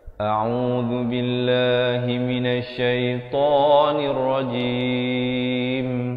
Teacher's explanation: di akhir barulah ditutupkan rapat mulut, menyempurnakan bunyi mim · A'u, dengan hamzah di pangkal kerongkong, ain di pertengahan kerongkong, zu di hujung lidah.